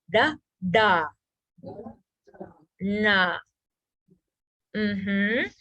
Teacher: retroflex or cerebral so this is where the tip of the tongue is on the roof of the mouth